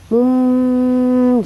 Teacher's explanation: iklab itu adalah nun mati atau tanwin bertemu dengan huruf ba, maka dia berubah menjadi mim bunyinya. Harus didengungkan ya.